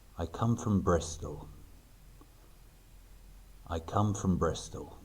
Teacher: Notice that I stress the words come and Bristol slightly.